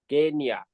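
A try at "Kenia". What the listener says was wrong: Muy bien. Excellent.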